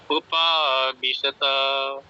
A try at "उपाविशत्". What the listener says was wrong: उपाविशत तय बोला, ये तय पूरा नहीं है। उपाविशत। उपाविशत तय नहीं बोलना है, ठीक है, तय पूरा नहीं है, आधा है।